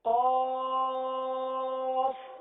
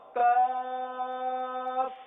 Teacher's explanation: تھوڑا سا فرق ہے ان دونوں کے مخرج میں. قاف زبان کی جڑ اور تالو کے نرم حصے سے ادا ہوتا ہے اور کاف زبان کی جڑ اور تالو کے سخت حصے سے ادا ہوتا ہے